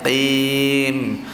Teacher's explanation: huruf qaf kita tekan pada anak tekak tadi